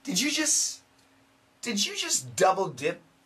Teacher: the s kills the t